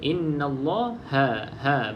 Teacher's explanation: baca dengan ha iaitu h a jangan baca dengan ho ho tu dah salah